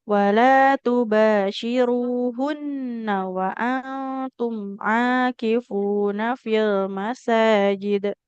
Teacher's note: di hunnanya nggak boleh panjang